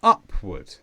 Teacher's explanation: an adverb with the stress on up, upward. And this means in a direction which is going up.